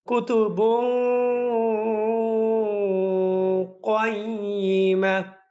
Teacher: এই বুন, বা দুই পেশ বুন, এরপরে কফ, এই জায়গার মধ্যে আপনাকে ইখফা গুন্না করতে হবে।